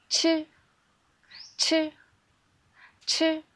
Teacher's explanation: When you pronounce 吃, you can also feel the air comes from your mouth. And you can put your hand in front of your mouth to feel the air.